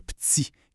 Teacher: c'est la prononciation affriquée, le petit, qui va vraiment signer l'origine québécoise.